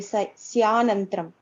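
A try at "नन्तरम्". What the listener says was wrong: Dukkasya nantaram, not nantram. Why it is nantram? Nantaram. Nantaram. Sukhasyanantaram. One word, if you mean. Okay, it's not one word, but when you are reading, you have to read like that.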